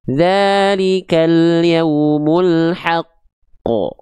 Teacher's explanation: Dan satu lagi ada qalqalah akbar. Kalau berhenti pada huruf qalqalah yang ada tanda tasydidnya. Dalikal yaumul haqqo. Ada tekan dulu baru lempar